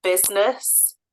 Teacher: Business, we don't say that I in the middle.